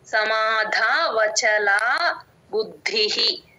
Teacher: సమాధా ధ కి మహాప్రాణం ఉందండి గమనించండి